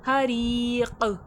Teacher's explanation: حریق، ری میں یا مدہ، یا ساکن سے پہلے زیر کھینچ کے پڑھا جائے گا، خوف میں خلخلے کی صفات واضح ہوگی، آواز پلٹ کر آئے گی